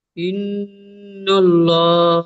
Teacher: না ইন গুন্না হবে, ছেড়ে আর দিচ্ছেন ছেড়ে দিচ্ছেন ছেড়ে দিচ্ছেন, ইন তাসদিদ হয়েছে, নুন এবং মিমের উপরে তাসদিদ থাকলে ওয়াজিব গুন্না একালি পরিমাণ গুন্না করা, তাই গুন্না করেন।